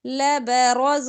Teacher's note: را پر زبر ہے تو را موٹا ہوگا، باقی حرف باریک ہے